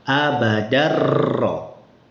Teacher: tanwinnya hilang sama sekali gunahnya tidak ada. Kemudian ee apa tanwinnya bunyi annya juga hilang langsung masuk ke ro semua abadaro. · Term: idgham kamil